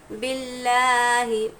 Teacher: با لام زیر بل، لام کھڑا زبر لا، باللہ، ہاں زیر ہی، باللہ، جب بھی لفظ اللہ کے لام سے پہلے حرف پر زیر ہو تو یہ اللہ کا لام باریک پڑھا جائے گا